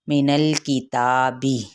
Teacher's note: مینل یہاں پہ زبان لام کے مخرج پہ لگے گی، وہیں پہ آپ نے ٹکا کے آگے والے حرف کی جانب پڑھنا ہے